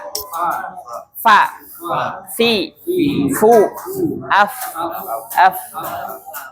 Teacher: Gigi atas bertemu dengan bibir bawah ya. Jadi enggak dua-duanya bibir.